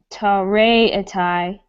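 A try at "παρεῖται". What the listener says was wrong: That's a pi at the front of that.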